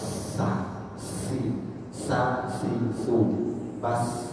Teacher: ujung lidah bertemu atau kita tempelkan pada bagian bawah gigi seri kita, ya, halaman gigi bawah gigi seri. Kemudian setelah itu nempel, maka suara yang keluar itu akan di antara gigi atas dan gigi bawah. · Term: sifat halus